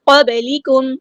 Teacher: رہا ہے، قاف ہمارا ہیوی لیٹر ہے، پورا ادا کریں گے، با باریک لائٹ لیٹر ہے اور با ساکن ہے تو یہاں پہ قلقلہ ہو رہا ہے، آواز جو ہے وہ ہلانی ہے آپ نے ، یہاں پہ با ساکن کو ہلانا ہے، قب نہیں قب،